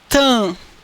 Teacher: Esse M tem como única responsabilidade nasalizar o A. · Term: A nasal